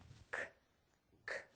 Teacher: The airflow will stop or puff out, and our voice is off. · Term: K sound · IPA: /k/